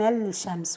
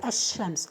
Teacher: So this lam is merged into the letters of the idgham, like we're not saying al-shams, we say ash-shams. So the lam is merged into the sheen, and that's because the lam is close to the sheen in its articulation point. · This lam at the beginning of the word, preceded by hamzatul wasl, is merged into the letters of the idgham